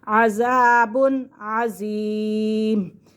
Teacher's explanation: یہاں پہ بھی ہم غنہ نہیں کریں گے، تنوین کے فوراً بعد عین آ رہا ہے، عین حروف حلقی میں سے، تو اسی لیے ہم یہاں پہ غنہ نہیں کریں گے